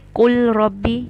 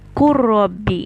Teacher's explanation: So after qul, which is lam sukoon, you have ra. So you won't say qul rabbi, you will say qur rabbi. You will join it. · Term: idgham